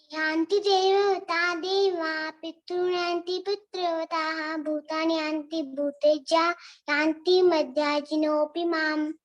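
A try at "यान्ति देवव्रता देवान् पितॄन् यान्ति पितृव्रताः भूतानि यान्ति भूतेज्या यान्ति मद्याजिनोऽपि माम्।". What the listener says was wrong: उत्तम उत्तम, बहुत सुंदर।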